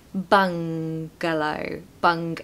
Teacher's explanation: Pronunciation tip, this is actually a really difficult word to say because you're not going to say bungalow, bun. It's like, it's in the back of the throat, this ng sound. So it's bung, ng.